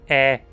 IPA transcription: ɛ